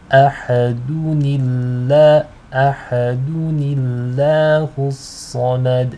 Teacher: the lam will be light because it is preceded by a noon with a kasra